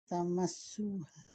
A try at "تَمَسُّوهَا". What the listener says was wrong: تم میم کو تشدید ایسا پڑھ رہے ہیں، تمس